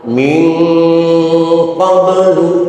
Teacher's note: Min qablu ada nun mati ketemu huruf qaf, hukumnya ikhfa, namun ikhfanya ikhfa ab'ad sehingga suaranya suara ang